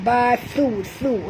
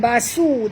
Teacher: Wa izal la yalbathu, la dua harakat, yalbathu, thu di sini dua harakat, sebut betul-betul bathu, thu ya, bukan basu tapi bathu, sentil lidah ya